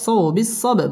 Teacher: বা কলকলার হরফ ধাক্কা দিয়ে পড়তে হবে ওয়াতাওয়াসাউ বিসসাবর র পুরো হবে এবং এখানে ওয়াকফ করতে হবে وتواصوا